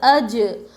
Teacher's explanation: جیم حروف قلقلہ میں سے ہے، ان کو پڑھتے وقت ان کے مخرج ٹکر کھا کر الگ ہوتے ہیں